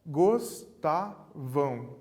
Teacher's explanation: temos três sílabas na palavra gostava a sílaba tônica é o tá